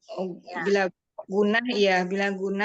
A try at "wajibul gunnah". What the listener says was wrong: Wajib gunnah, bukan bila gunnah. Wajib gunnah, wajibul gunnah.